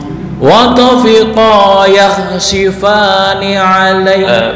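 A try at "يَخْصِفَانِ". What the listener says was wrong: belum, masih tercampur dengan shin. bukan shi bukan si biasa si yakhsifa yakhsi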